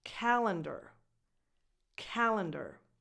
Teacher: the other 2 vowels in the other 2 syllables are less defined because those syllables are not stressed. Calendar.